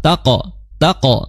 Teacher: qof qalqalah. Taqo taqo ya disertai dengan suara tebal karena dia istila